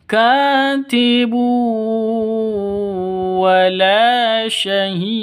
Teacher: Tanwin bertemu dengan wawu, cara bacanya masuk ke wawu disertai dengung 2 ketukan karena idgham bi gunnah.